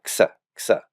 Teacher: any velar stop plus a sigma produces the X sound